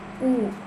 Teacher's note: dilafalkan dengan bibir membulat dan lidah tinggi di belakang